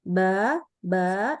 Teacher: Itu adalah huruf yang pakai bibir bukan pakai gigi